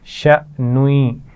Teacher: حمزہ ساکن موجود ہے، جھٹکے سے پڑھیں گے. اور شأنوی، نون کو جب یا سے ملائیں گے تو یہاں غنہ بھی کیا جائے گا.